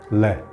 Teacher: ऐसा वर्ण जिसका उच्चारण करते समय ध्वनि जीवा के आसपास से निकल जाए। ल, जैसे ल बोलोगे तो आपको ऐसा महसूस होगा ल, तो ध्वनि जीवा के आसपास से निकल जाती है, तो उसे पार्श्विक व्यंजन बोलते हैं।